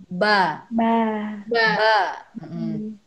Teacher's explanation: Ba bertemunya bibir atas dengan bibir bawah.